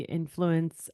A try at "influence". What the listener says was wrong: Instead of influence. Buses on the wrong syllable.